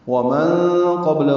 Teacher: نون ساکن کے بعد قاف آنے کی وجہ سے اخفا ہے، قاف پر ہے، با ساکن کی قلقلہ ہے، لام باریک ہے، الٹا پیش مد صلہ ہے، 2 حرکات لمبا ہے۔